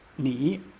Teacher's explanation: Starts in the middle, goes low, goes high. There's a third tone